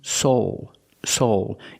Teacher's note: Use a long O plus the dark L.